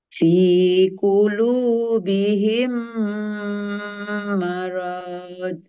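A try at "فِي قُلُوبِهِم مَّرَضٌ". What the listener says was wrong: hati-hati rnya Bu masih kepanjangan Bu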